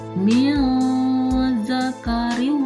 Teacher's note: ini tanwin ketemu huruf waw, dibaca dengung, yaitu hukum bacaannya idgham biguna.